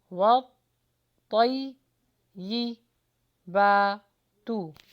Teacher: फिर होठों को गोल कीजिए, वाव का मखरज आ रहा है, वत, वत। यहाँ पर तौ है तो थोड़ा हैवी करके पढ़ेंगे